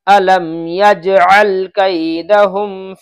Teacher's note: یجعل کا عین نکلنا چاہیے، یجل کر دیتے ہیں، غلط ہے۔